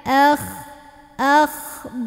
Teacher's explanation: Akh, naikin pangkal lidah.